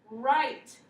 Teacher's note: so you'll hear the r but not the w